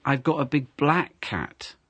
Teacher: so the color this time you've stressed the color so it's not a white cat it's it's not a brown